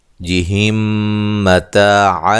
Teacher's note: اچھا، یہاں میم ساکن کا ادغام ہو رہا ہے، ٹھیک ہے، میم ساکن کا میم متحرک میں ادغام ہو رہا ہے